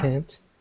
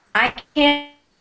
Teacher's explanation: The T almost disappears.